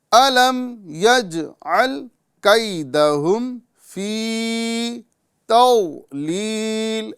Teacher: ہم جیم کی آواز جو ہے قلقلہ کے ساتھ پڑھیں گے، یعنی یجعل اور اس میں یجعل فرق ہے.